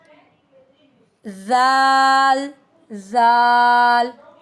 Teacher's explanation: Tip of the tongue touch the एज of upper teeth. तो यहां से हमारे पास जाल अदा होता है।